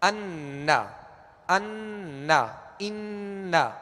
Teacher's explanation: جیسے نا اشہد ان، تو اشہد ان لا نہیں پڑھیں گے ورنہ یہ اخفاء کا غنہ ہو جائے گا. اس میں نون واضح اور ظاہر ہوگا اور اس کا غنہ واضح ہوگا · تو ناک میں آواز لے جا کر ایک الف کی مقدار ٹھہریں گے